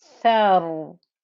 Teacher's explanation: you can hear the noise, the thickness of the ra when I stop on it.